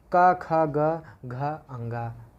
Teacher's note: घ का उच्चारण स्थान कंठ है